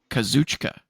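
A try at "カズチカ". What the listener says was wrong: It's like Kazuchika, but you don't say the I. Kazuchika.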